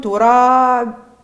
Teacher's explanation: صفة القلقلة تعطي قوة لصوت الباء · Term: الباء المقلقلة